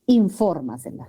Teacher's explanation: El acento recae en la trasantepenúltima sílaba. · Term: Sobresdrújula